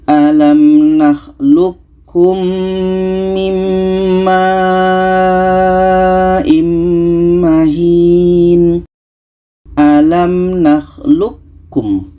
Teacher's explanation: Maka qa ini yang asalnya qalqalah tidak jadi. Kita masukkan ke ka. Kita idghamkan ke ka. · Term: idgham mutaqaribain